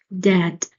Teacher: Now when we read dad the d sound here because of the uh of the a this vowel it is a very plain basic sound d you feel that the tip of your tongue is hitting the upper gum of your teeth. Dad, a quick hit and the you you you raise your tongue and then it will quickly get back to its normal position.